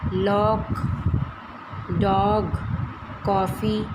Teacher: अ स्वर की ध्वनि आ तथा ओ के बीच की होती है। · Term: आगत स्वर